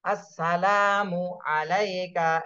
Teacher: লামে শুধু এক আলিফ টান দিতে হবে